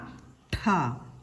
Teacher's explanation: ട എന്ന ശബ്ദത്തോട് ഹ ചേർന്ന് ഉച്ചരിക്കുന്ന ഠ